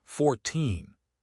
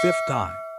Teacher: Stress on the end for teens, stress on the start for ties.